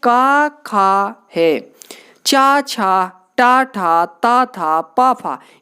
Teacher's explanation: प्रत्येक वर्ग का पहला और दूसरा अघोष की श्रेणी में आएगा